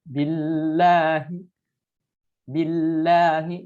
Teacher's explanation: lafaz jalalah ini dibacanya harus tarkik karena sebelum lafaz Allahnya ini adalah huruf berharokat kasrah. Billahi, billahi, jadi bukan billah, billahi.